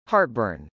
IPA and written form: hˈɑrtbˌɝn (heartburn)